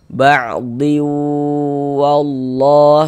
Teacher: berarti bunyi tanwinnya dimasukkan ke huruf wau. Sehingga ini kita baca ba'diu. · Kemudian di bagian diunya itu suaranya itu kita tahan sebentar. Nah, kita dengungkan, kita gunakan sepanjang 2 harokat. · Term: idgham bighunah